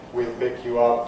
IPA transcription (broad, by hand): wil ˌpɪk ju ˌʌp